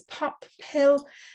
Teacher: we speak about vocal folds which are held apart far enough and long enough to produce an extra puff of air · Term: aspiration